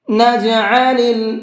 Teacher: یہاں پر حمزہ نہیں ہے، عین ہے، اکثر لوگ اس میں غلطی کرتے ہیں، نجعل پڑھتے ہیں، تو آپ کو نجعل نہیں پڑھنا ہے، اس کو حلق سے نکال کر کے پڑھیں گے